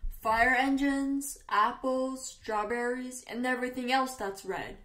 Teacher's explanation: 那么这里边的语调就是一系列的东西的时候，我们列举东西前边都是升调，升调，升调，只有最后一个才是降调。